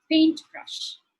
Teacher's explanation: In the compound words, the rules of nouns and adjectives are the same as even if it isn't a compound word. So the stress would be on the first syllable